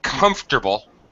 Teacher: The middle syllable is dropped completely. This is called ellipsis.